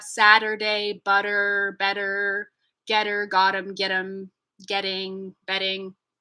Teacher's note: it's not a muscle movement of this up and down it's it's a movement of slapping the tongue against the roof of the mouth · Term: flap